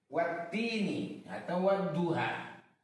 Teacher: Maka lamnya itu tidak dibaca dengan jelas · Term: alif lam syamsiah